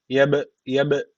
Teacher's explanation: kalkale yapacağız yani dudaktan bir vurgulayacak